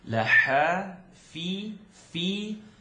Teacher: You're gonna blow the air, not gonna scratch it.